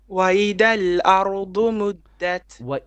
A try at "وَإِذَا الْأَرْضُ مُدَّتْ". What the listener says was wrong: Your dhal is not clear enough.